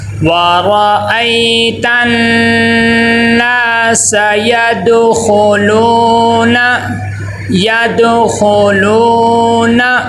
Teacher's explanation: حرکات غیر متمثل میں سے ہے، نون کو لمبا نہیں کرنا۔ اکثر بچے یہ غلطی کرتے ہیں کہ آخر میں حرکات غیر مد آتی ہے، اس کو کیا کر دیتے ہیں، لمبا کر دیتے ہیں، یدخلون، یہ لمبا نہیں کرنا، اور جھٹکا بھی یدخلون، جھٹکا بھی نہیں دینا، بالکل آرام سے۔